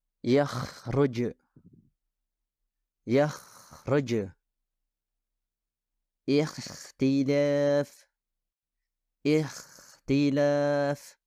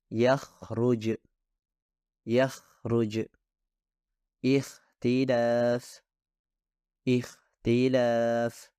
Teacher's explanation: seharusnya suara Ko berasal dari mulut yang lebih dalam bahkan dari bagian terdekat tenggorokan